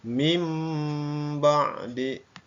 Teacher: Jadi suara nun matinya berubah menjadi suara mim, ya. Mim ba'di, bukan min ba'di, salah, ya. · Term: iqlab